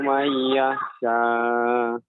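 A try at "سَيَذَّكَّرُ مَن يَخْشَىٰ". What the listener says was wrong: Kemudian nun sukun bertemu dengan ya, ini kan hukumnya idgham biguna. Nah, tentunya ini harus lebih diberi tempo, ya, diberi tempo, membacanya tidak terlalu cepat. Mai sayadzakkaru man yakhsha.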